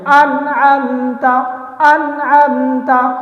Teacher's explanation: بغیر غنہ کیے صاف ستھرا اور جلد پڑھیں گے